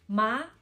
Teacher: And we go up and then down, up and down. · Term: thanh hỏi